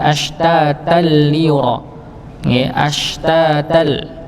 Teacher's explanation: langsung masuk kepada huruf lam tanpa dengung. Maka disebut idgham bila ghunnah.